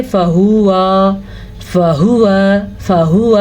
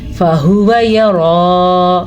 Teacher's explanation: نہ ہا کو لمبا کرنا ہے نہ واؤ کو لمبا کرنا ہے، کیونکہ ان دونوں کے اوپر بڑی زبر حرکتیں ہیں.